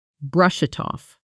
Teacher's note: Let's pronounce it naturally with connected speech. Brush it off at natural speed blends into something like brush it off. Almost one flowing sound.